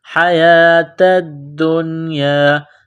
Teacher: تا کو دال کے ساتھ ملانا ہے، دال میں سختی کرنی ہے، دال کو نون کے ساتھ ملائیں گے